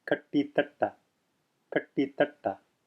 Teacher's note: See here we have, in the same word, we have a retroflex ta, tongue curled, tip of the tongue curled, touching the roof of the mouth